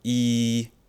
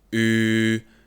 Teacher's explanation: En tenslotte, de paren zijn de ronding van de mond. Links heb je een wijde mond, i, en rechts heb je een ronde mond, u.